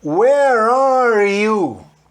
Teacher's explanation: eu pego o R do are e junto com o Y ali do you e falo where are you?